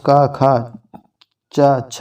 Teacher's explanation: इन वर्णों के उच्चारण में स्वर तंत्रियां आपस में नहीं मिलती हैं, जिसके आधार पर वायु आसानी से बाहर निकल जाती है। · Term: अघोष वर्ण